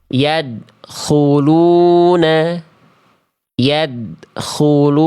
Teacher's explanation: Dilafalkan dengan tidak memantulkan suara